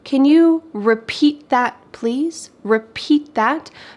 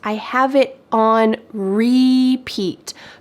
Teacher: Usually when we say the word repeat, it's the final part of the word that's emphasized.